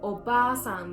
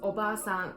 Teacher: the only difference is the short or long vowels